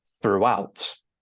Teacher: with the stress timing, we stress the second syllable